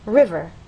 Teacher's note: understand that the first syllable is stressed